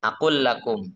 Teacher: Nah, yang idgham akul lakum, ya kan di lam pertama dimasukkan ke lam ya kedua